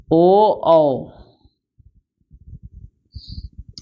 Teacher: ओ औ यह हुआ कंठ और ओठ से